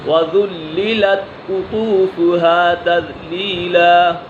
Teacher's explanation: قاف بھی پر ہے اور طا بھی پر حرف مستعلیہ میں سے ہے